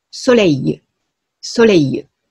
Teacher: ソレイルではなくて、ソレイユというふうに、半母音なんですね